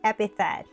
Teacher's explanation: Look at the IPA symbols. The stress is on the first syllable.